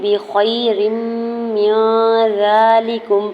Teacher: ادغام مع غنہ کا rule apply ہو رہا ہے، میم کی زیر کو نون ساکن کے ساتھ ملاتے ہوئے نون ساکن پہ اخفا کریں گے۔ زال کے اوپر کھڑی زبر دوڑ کر کھینچ کے ادا کریں گے، لام کی زیر کو بغیر کھینچے اور کاف کی پیش کو میم ساکن کے ساتھ ملاتے ہوئے پڑھیں گے۔ · بخیر من ذالکم، با کی زیر کو بغیر کھنچی ادا کرنا ہے، یا ساکن سے پہلے خا کے اوپر زبر یا لین ہو رہا ہے، نرمی سے موڑتے ادا کریں گے۔ را کے نیچے دو زیر کی تنوین کو میم مشدد کے ساتھ ملاتے ہوئے غنہ کریں گے۔